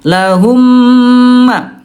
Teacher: Ya ini bunda namanya idgham mimi atau idgham mithlain ya bunda sekalian, yaitu ketika mim bertemu dengan mim ya ayo bunda dibaca dengan jelas dan ditahan 2 ketukan ya. Ketika mim bertemu dengan mim, bibirnya rapat banget bunda ya.